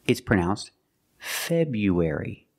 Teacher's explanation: We know the R is there, but most of the time we don't pronounce it.